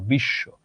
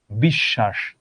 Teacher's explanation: ও যেই বর্ণটার সঙ্গে আছে সেই বর্ণটা দ্বিত্ব হয়, মানে এটা দুইবার উচ্চারণ হয়। যেমন ধরো এখানেও আছে তালব্য শ এর সঙ্গে, তালব্য শ দুইবার উচ্চারিত হলো বিশ্ব।